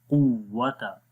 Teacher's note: قاف کو زبان کی جڑ جب تالو کے نرم حصے پہ لگے گی تو قاف ادا ہوگا